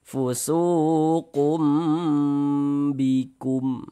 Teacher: Nah, singnya suu dibaca panjang. Mad thobi'i panjang dua harakat.